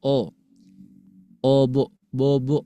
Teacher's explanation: Antara bunyi o Latin dengan o Arab itu beda, Bunda ya. Kalau o Latin itu dihasilkan dari memonyongkan kedua bibir